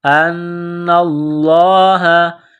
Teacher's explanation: نون مشدد ہے، غنہ کریں گے، آواز ناک میں چھپائیں گے. لفظ اللہ کے نام سے پہلے زبر ہے، لفظ اللہ کے نام کو موٹا کرنا ہے.